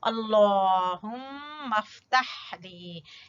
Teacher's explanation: ہا کو وسط حلق سے